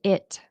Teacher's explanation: There's no H. Okay? So, don't say hit it. Okay? Say it.